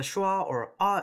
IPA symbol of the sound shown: ɐ